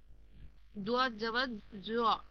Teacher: জিহ্বার একটা সাইড দাঁতের গোড়াকে স্পর্শ করবে, ডান দিকে অথবা বাম দিকে